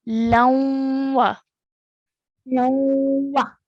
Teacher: When we say this, we're going to produce a nasal sound in between, joining the lam to the waw